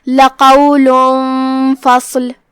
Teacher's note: اخفاء کا معنی ہے چھپا دینا، تو ہم تنوین کو چھپاتے ہوئے بغیر ظاہر کیے ہوئے لیکن غنہ کے ساتھ یہ حکم کو ادا کریں گے · صاد پہ جزم ہے تو ہم اسے ظاہر کریں گے اور صاد کو تفخیم سے ادا کریں